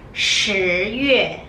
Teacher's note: When you pronounce 十, you need to curl your tongue.